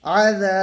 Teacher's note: আলিফ মাদ্দাকে এক আলিফ টান দিয়ে পড়বো